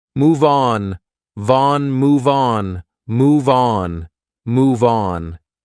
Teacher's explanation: on is a vowel, so we can transfer that sound and we can say these two like one word